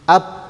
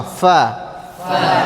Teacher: hams itu artinya udara mengalir